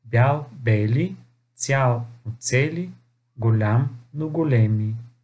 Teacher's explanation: Познато ви е правилото за променливото я, което гласи, че когато попадне пред сричка, съдържаща звуковете е и и, това я се променя в е.